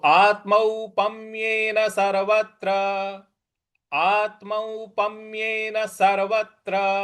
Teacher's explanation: यहां जो त्र है उस पर हमको बल लगाना है